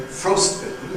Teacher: So we say ‘ ˋfrostₒbitten ’ as we see, compound, Nucleus on the ‘ frost ’